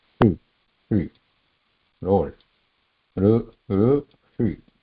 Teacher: The Shri is also Murdhanya, again, rolled tip of the tongue, and we are not pronouncing she there